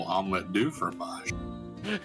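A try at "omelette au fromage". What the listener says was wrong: I believe it's. I don't know how to pronounce it, but it's AU instead of DU. It's my understanding that the omelette du fromage was a mistranslation.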